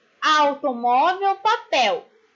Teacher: O L depois de vogal e estando na mesma sílaba que ele tem som de U.